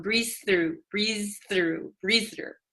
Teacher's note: the z z and the t almost become one